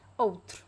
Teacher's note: So the stressed syllable is the first one, and then the other vowels, they are very weak. You can barely hear it.